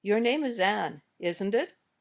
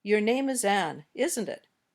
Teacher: when we use Rising intonation we're saying I really don't know the answer I'm not sure what you'll say your name is an isn't